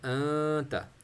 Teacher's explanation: ناک آواز جو ہے وہ ناک میں ہم چھوڑیں گے، مطلب پوز کریں گے تو آواز خود بخود ناک میں جائے گی، اور اوپر سے نکلے آواز نکلے گی تو پھر وہ غنہ یا اخفا کہلائے گا.